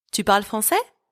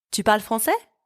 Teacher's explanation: I've just raised my voice at the end of the sentence. It is the same structure, but for the question, my voice rises at the end. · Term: intonation